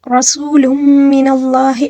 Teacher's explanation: را کے اوپر زبر ہے، اس کو پر پڑھیں گے ، ٹھیک ہے، اور سین کی سیٹی اور واو کے اوپر · اس سے پہلے والے حرف کے اوپر پیش ہے، ٹھیک ہے، تو یہاں پر واو مدہ ہے، اس کو ایک الف کے برابر کھینچ کر پڑھنا ہوگا ، اور لام کے اوپر جو تنوین ہے یعنی 2 پیش